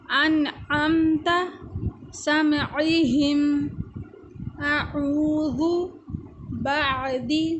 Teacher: ہا جو کہ ادا ہوتا ہے حلق کے آخری حصے سے، اثقالها، علیہم، ہمزۃ، اہدنا۔ عین اور ہا جو کہ ادا ہوتے ہیں حلق کے درمیانی حصے سے